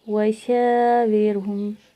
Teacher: اظہار شفی ہے، وشاورہم، شین بھی باریک پڑا ہے، الف بھی باریک پڑا ہے، لیکن یہاں پہ الف مدہ ہے تو ایک الف کے برابر کھینچ کے پڑھنا ہے.